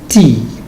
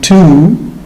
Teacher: In T, the lips are spread as if I were smiling. T. But in two, we have a kind of lip rounding and protruding.